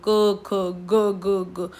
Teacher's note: पूरा का पूरा जो क वर्ग है, जिसमें क ख ग घ, ये सारे का सारा कंठ से बोले जाते हैं